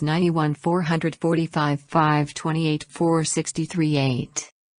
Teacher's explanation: Intonation rises at the end, but for one set of numbers when we approach its end, the tone then drops on the last number as it does in statements.